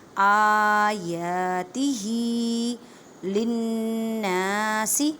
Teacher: آیاتہ للناس نون مشدد گنہ کریں، گنے کا مطلب ہے آواز کو ناک میں لے کے جانا ایک الف کی مقدار میں